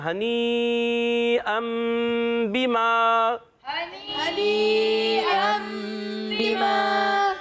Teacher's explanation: اور پھر تنوین کے بعد آپ دیکھیں چھوٹی سی میم نظر آ رہی ہے، تنوین کے بعد یہ با جو ہے نا، اس کی وجہ سے میم آئی ہے۔ یہ نون ساکن تنوین کے بعد جب حرف با آتا ہے تو نون ساکن تنوین کو میم سے بدل کر اقلاب کرتے ہیں، اس کو اقلاب کہتے ہیں۔